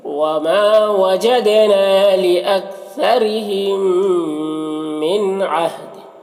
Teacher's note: نون ساکن کے بعد عین حروف حلقے میں سے تو نون میں اظہار حقیقی ہوگا۔ عہد، یہاں پر وقف کریں گے تو یہ 2 زیر کی تنوین سکون سے بدل جائے گا، تو پھر دال میں قلقلہ ہوگا، اس طرح سے پڑھیں گے۔